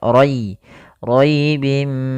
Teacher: pada lafal rai-nya di sini ada ra tafkhim, ra tebal, yaitu ra yang berharokat fathah